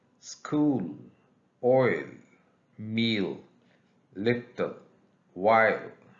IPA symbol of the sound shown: l